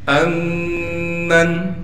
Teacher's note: اگلی آیت پڑھتے ہیں۔ امن، حمزہ کو میم سے ملائیں گے اس لیے کہ میم پر تشدید ہے، میم پر تشدید ہونے کی وجہ سے غنہ کریں گے، پھر میم کو نون سے ملائیں گے بغیر غننے کے، یہاں غنہ نہیں ہوگا۔